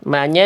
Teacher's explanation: Makanya dibaca dua harakat karena ada fathah ketemu alif ya. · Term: Mad thobi'i